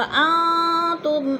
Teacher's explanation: نون ساکن کے بعد تا آ گیا ہے حروف اخفا میں سے تو ادھر اخفا ہو رہا ہے، آواز کو ناک میں چھپا کر پڑھیں گے